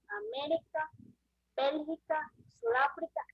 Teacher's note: Son las que llevan intensidad de la voz en la antepenúltima sílaba. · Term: palabras estrújulas